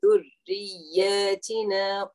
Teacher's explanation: make sure that the tip of the tongue is touching the edges of the top teeth